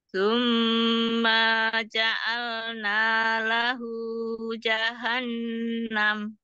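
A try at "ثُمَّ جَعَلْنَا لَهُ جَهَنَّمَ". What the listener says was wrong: Tapi tadi dikata ma-nya lebih dari satu.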